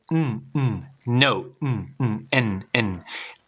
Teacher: el sonido N, cuando tú lo dices, no, n, tu garganta vibra, usas la garganta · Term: vibración en garganta